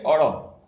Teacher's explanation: અળ જે છે એ છે એમાં થડકાર આવેલ છે, એટલે અળને આપણે થડકાર વાળો ધ્વનિ કહેશું